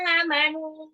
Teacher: Amanu itu alif sama nunnya 2 harokat